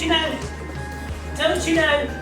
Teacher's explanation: if T and Y get together, they are fused and they change into ch sound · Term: consonant assimilation